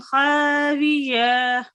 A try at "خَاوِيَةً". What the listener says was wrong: تو اس کے علاوہ آخری جو لفظ آپ نے پڑھا خاویہ اس کو لمبا کر دیا خاویہ خاویہ.